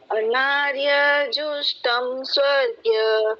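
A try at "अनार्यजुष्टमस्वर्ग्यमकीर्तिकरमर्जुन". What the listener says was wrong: जुष्टम स्वर्गीय नहीं है। अनार्य जुष्टम स्वर्गीय। मैं आप पूरा फिर भी नहीं बोल रहे हैं, मैं को बीच में खा रहे आधा। अनार्य जुष्टम स्वर्गीय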